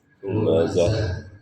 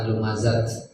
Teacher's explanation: Kalau wakof maka dibacanya bunyi H besar ya, H. Lumazah. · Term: tak marbutoh